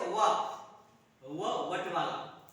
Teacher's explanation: व ये व वर्ण है, इसका उच्चारण स्थान दंत और ओष्ठ है।